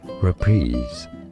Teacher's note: Reprise, so it's kind of between an a schwa sound and an e sound. Reprise, with a stress on that second syllable and a z sound at the end. Reprise is how you say it, both British and American English, and now you know.